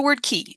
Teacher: notice that the K is not pronounced in the same way your tongue is actually moved forward when it pronounces the K because the E requires your tongue to be pronounced further forward in the mouth than the U and so you move that K forward so